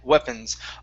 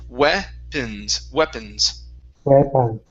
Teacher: All had weapons in their hands. Okay, now the O on weapons, okay, this is actually going to be a short I sound